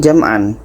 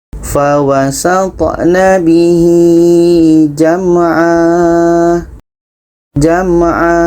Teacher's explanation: Ini jam'an. Tanwin atas karena berhenti kita buang barisnya 1, akhirnya menjadi panjang alif.